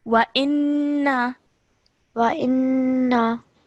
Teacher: you're holding the nasal sound, but you're letting it go and not stretching that sound any further